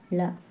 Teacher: நாவின் இரு பக்கங்கள் தடித்து மேல் பற்களின் அடியை தொடுவதால் தோன்றும் எழுத்து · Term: பொது லகரம்